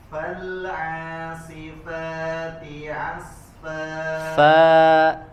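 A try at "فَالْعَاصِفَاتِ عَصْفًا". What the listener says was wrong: Fal'asifa, agak buka rahangnya. Bukan fa, tapi fa.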